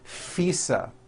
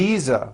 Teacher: I said fisa with an unvoiced F I should have said V Visa with a voiced V